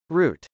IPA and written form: rˈut (route)